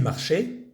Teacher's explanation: que se escribe marchaient, S-A-I-E-N-T al final se dice marché. Y estamos aquí conjugándolo con ils, il, que es la tercera persona del plural.